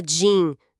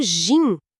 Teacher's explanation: tem um som de i mais curto, bem fechadinho, ressoa quase lá na garganta. >> Uhum.